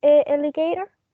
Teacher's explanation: the stress is at the beginning in the first syllable